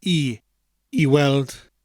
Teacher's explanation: is that gwelt is the word for to see or seeing in the sentence i said weld without the g and that's because there was a soft mutation after the word e